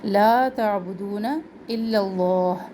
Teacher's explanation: عین وسط حلق سے اس کو ادا کرے. تعبدون، دو و مدہ، الا اللہ.